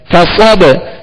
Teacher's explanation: صاد کو پر اور موٹا پڑھیں گے، صاد میں سیٹی کی آواز پیدا کریں گے